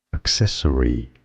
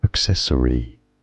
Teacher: Stress on the second syllable. Both British and American pronunciations are similar here.